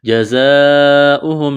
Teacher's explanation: زا میں سیٹی کی آواز پیدا کریں گے ، لمبی مد ہے، 4 الف کے برابر کھینچنا ہے، ان